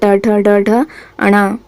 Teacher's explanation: ट का उच्चारण स्थान होता है मुरधा